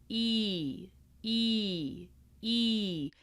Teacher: it gets closer to the roof of your mouth as you travel through the sound